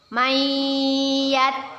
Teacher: kita masukkan huruf nun sukun Nya kepada huruf ya dengan berdengung dan ditahan dua harokat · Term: Idgham Bighunnah